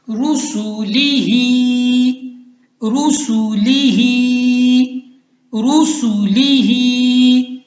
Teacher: ہا کو کھینچنا ہے، کیوں؟ کیونکہ یہ کھری زیر ہے اس کے نیچے